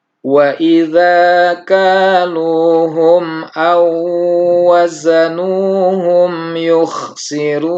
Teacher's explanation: Nah, di sini kita melihat ada wawu sukun bertemu dengan waw, maka dihukumi idgham mutamatsilain dengan melebur waw sukun ini masuk ke waw yang kedua, seolah-olah waw yang kedua ditasydid atau bertasydid